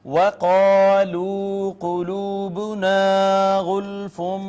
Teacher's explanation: واو کو ہونٹ گول کر کے ادا کریں گے، قاف کو پر کر کے پڑھیں گے